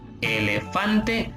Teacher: Fan es la sílaba donde recae más la fuerza, por eso es acento prosódico. Repito, el acento prosódico es el acento que se pronuncia con más fuerza en las palabras y que estas palabras obviamente no llevan tilde, no llevan tilde.